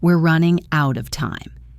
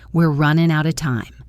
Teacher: Out of gets reduced to outa.